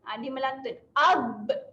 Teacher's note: huruf ba, rapatkan bibir juga di hujung, tetapi tambah sifat lantunan pada huruf ba, menghasilkan bunyi ab.